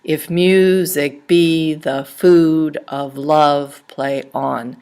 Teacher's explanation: unstressed followed by a stressed syllable, 5 beats in a line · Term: iambic